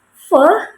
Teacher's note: ketika diucapkan ee udara itu keluar melalui gesekan ee maaf melalui cela-cela sempit yang ada begitu dan udaranya itu keluar secara sedikit-sedikit tetapi terjadi terus-menerus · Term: frikatif